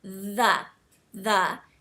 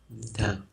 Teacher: between your teeth and just just practice that initial sound and you should feel sort of a buzzing feeling on your tongue like it sort of vibrates a little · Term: th sound